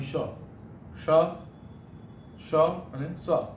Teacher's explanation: જે વ્યંજનો બોલતી વખતે સહેજ ગરમ ઉષ્મા એટલે હવા આપણા મોઢાથી બહાર નીકળે એવા વ્યંજનો એટલે ઉષ્માક્ષર. કારણ કે બોલો છો ત્યારે અંદરથી ગરમ વરાળ જેવું આપણામાંથી બહાર નીકળે એવું લાગે છે.